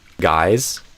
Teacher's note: So if I do guys and then there's like a pause or a consonant after it, guys, what I think we will hear is it'll start as a Z sound and end as an S sound. So I think there will be partial final devoicing · it'll start as a Z sound and end as an S sound. So I think there will be partial final devoicing, as I think like the technical term for it.